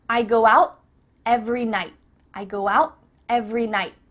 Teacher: night do you hear I go out every night nope instead your tongue is at the top of your mouth you're about to make the T sound but no air goes through so it's just stopped at the top of your mouth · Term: cut off the T